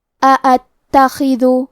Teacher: تا پہ تشدید ہے تو ہم 2 حرف کے برابر تا کو پڑھیں گے. خا کی ادائیگی حلق کے اوپر والے حصے سے ہے